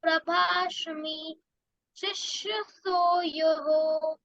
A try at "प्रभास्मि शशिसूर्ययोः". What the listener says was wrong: श और स में डिफरेंस नहीं आ रहा अच्छे। श और स में डिफरेंस होना चाहिए। प्रभास्मि शशि सूर्ययोः।